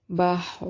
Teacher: را کو ہمیشہ موٹا پڑھیں گے، حالت فتحہ اور ضمہ میں را ہمیشہ موٹی پڑھی جاتی ہے